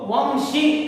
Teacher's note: उसी प्रकार शा, इसको वंशी कहकर पढ़ना चाहिए, वंशी नहीं कहना चाहिए, वंशी। यानी शा से जो पहले अनुस्वार आया है इसका उच्चारण मां का उच्चारण होता है